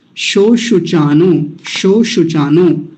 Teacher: दोनों जगह तालव्य शकार है